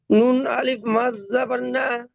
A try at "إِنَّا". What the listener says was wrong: নুন আলিফ মাদ জাবার না, টান দিয়ে বলেন।